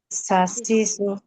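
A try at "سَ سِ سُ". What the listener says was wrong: সাসি সু, সাসি সু, সাসি সু, এভাবে বললে কিন্তু মাদ হয়ে যায়। জবর, জবর জের পেশ হরকতের উচ্চারণ দ্রুত করতে হবে। সাসিসু, এভাবে বলতে হবে সাসিসু।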